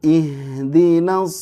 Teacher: Ada Ha sukun ini harus ngalir suaranya